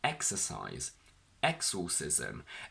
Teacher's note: when we say exercise the stress of the word falls onto the very first syllable on the first e which comes before the x